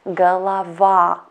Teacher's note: if letter o is not under the stress we pronounce it as letter ah that's why in this word first to o we pronounce as